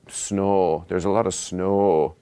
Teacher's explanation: instead of a diphthong, they have a monophthong. So just an O that's sort of held longer.